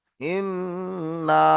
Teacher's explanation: উপরে তাসদিদ আসবে আর এই মিম এর উপরে তাসদিদ আসবে তখন নুন এবং মিমকে এক আলিফ পরিমাণ গুণনা করে পড়তে হবে অর্থাৎ নাকের মধ্যে কিছুক্ষণ রাখতে হবে